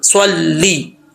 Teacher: سواد موٹا یعنی سواد جو ہے حروف مستعلیہ میں سے, اس کو پر پڑھیں گے